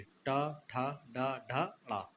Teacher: हमारी जिह्वा जो है यानी कि जीभ जो है घूम के टच होती है ऊपर। यानी कि जीभ हमारी घूम के उसके यानी इस तरीके से, ये इस तरीके से ये टच होती है हमारी, कहाँ पर, इसमें मूर्धा में।